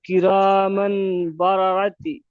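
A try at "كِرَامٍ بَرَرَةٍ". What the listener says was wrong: কিরামিম বারারাতিন, আপনি শুধু তি করছেন, তিন লাস্টে তিন হবে, তার নিচে দুজের আছে।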